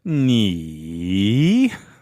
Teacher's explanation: third tone, you know that it's the falling and rising tone, the dipping tone